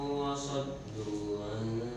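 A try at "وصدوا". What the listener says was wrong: saddu nah gitu, jangan kayak sin saddu.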